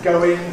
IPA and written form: ˈgəʊɪŋ (going)